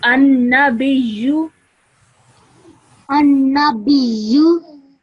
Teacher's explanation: you join the ba to the ya with a bit of force because of the shadda